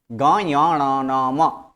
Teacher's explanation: है क्योंकि इसके उच्चारण नाक से होता है उच्चारण नाक से ग य अण न और म यह सब का उच्चारण नाक से होता है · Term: अनुनासिक व्यंजन